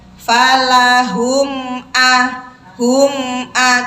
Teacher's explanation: mimnya dibaca jelas tapi meskipun dibaca jelas mim tetap mempunyai sifat ghunnah tapi kadarnya kadarnya ghunah naqis tidak sempurna jadi bacanya biasa saja · falahum pendek semua dan m-nya itu jangan dihentak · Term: izhar syafawi